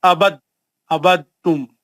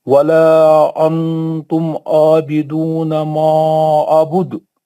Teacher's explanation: दाल पर कलकला कुबरा होता है, लेकिन यहाँ पर बीच में है ये सुगरा है, लेकिन जब ये उसके साथ मिल जाता है ना तो ये तो कुबरा बन जाता है ना।